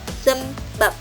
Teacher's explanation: bunyi b akan berubah menjadi p apabila menduduki posisi koda atau akhir suku kata